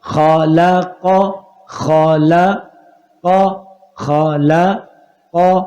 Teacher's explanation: لام باریک سے نکل رہا ہے. خا بھی موٹا ہے قاف بھی موٹا ہے. خا بھی موٹا ہے قاف بھی موٹا حروف ہے.